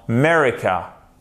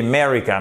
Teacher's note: on entend presque plus le a merry car ok Merry car vous voyez vous entendez Merry car